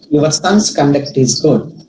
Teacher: The word conduct is noun and stress falls on the first syllable.